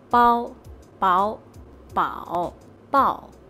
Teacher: There's a high flat tone, a rising tone, a falling rising tone, a falling tone, and the neutral tone.